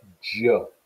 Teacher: j, which is like a D and a Z put together, which is an affricate, voiced affricate palatal sound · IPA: dʒ